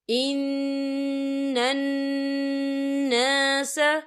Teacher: یہاں نون مشدد ہے تو یہاں پر غنّہ ہوگا،